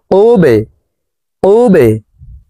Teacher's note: বা কলকলার হরফ, নিচের দিকে ধাবিত করে ধাক্কা দিয়ে উচ্চারণ করব